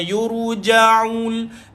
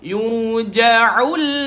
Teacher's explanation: Bila tuan-tuan tutup hidung, angin bunyi ain tu keluar dengan sempurna, maka betul lah bacaan ain tu tuan-puan. Kena tahu ain ini dekat tengah kerongkong, bukan dekat hidung.